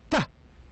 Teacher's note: the air is completely stopped T then it is released D the same G and P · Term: stop sounds